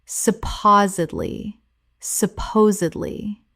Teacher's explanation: 4 syllables with the stress on the second. The D must be pronounced.